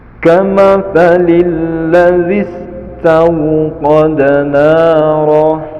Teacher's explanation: setelah melafadzkan zi langsung dimasukkan kepada sin sukun. Kamathalil ladzis, langsung, jangan sampai matnya masih ada ladzis, itu salah.